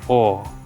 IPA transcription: ᴐ: